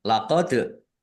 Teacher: Laqad dal sukun bacaan qalqalah dibaca memantul ditampakkan pantulannya. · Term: kolkolah